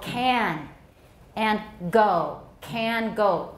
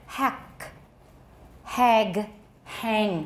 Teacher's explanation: the back of the tongue is raised to touch the velum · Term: velar sounds